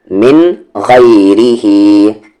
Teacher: را کو آپ کو لائٹ کرنا ہے کیونکہ را کی آواز نیچے جا رہی ہے